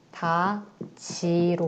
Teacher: 미닫 받침 디귿에 있는 것이 뒤에 형태소 이와 만나서 미다지로 발음되는 거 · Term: 국외음화